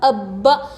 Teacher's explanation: ابا سختی کے ساتھ، ابا ہجے میں اب، حمزہ با زبر اب، با زبر با، ابا، جب یہ دونوں با مل جائیں گے تو اس وقت خلخلہ نہیں ہوگا، اس وقت سختی کے ساتھ پڑھیں گے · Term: تشدید